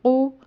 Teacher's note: یہ قاف دو نقطوں والا ہے، حلق سے ادا ہوتا ہے، موٹی آواز سے پڑھا جاتا ہے، یعنی پر پڑھا جاتا ہے۔